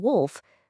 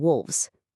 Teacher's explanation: The sharp f in wolf softens to a v in wolves.